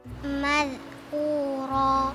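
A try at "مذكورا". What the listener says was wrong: Lidahnya jangan terlalu lebar. Jadi dilancipin. Madhkura.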